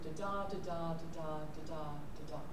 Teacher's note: Five repetitions of the unstressed stressed syllable in a line. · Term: iambic pentameter